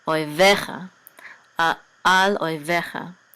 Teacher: so the accent is on ve